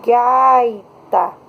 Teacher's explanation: Então, se eu tenho a palavra gaita, o I, ele não é pronunciado tão forte quanto A, e por isso esse I é chamado de semivogal.